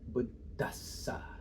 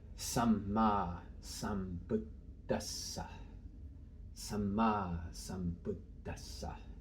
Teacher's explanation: So here we finally get our Buddha. So here we're doubling our D, and the second one's getting this puff of air.